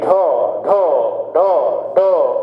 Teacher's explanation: और ये क्या होता है कि जब आप किस ऐसे वर्णों को बोलते हैं तो जीभ ऊपर जाके झटके से मुड़ने का प्रयास, नीचे झपके ढ, जीभ झटके से जाएगी ऊपर जाके टकरा के और मुड़ने का काम करेगी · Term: ताड़नजात